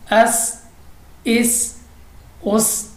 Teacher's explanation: तो सीटी वाली आवाज़ के साथ पढ़ेंगे